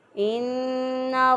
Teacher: इन्ना नून मुशद्दद है, नून मुशद्दद पर हमेशा गुन्ना होता है। एक अलिफ के बराबर गुन्ना करते हुए इसकी आवाज़ को हम अदा करेंगे।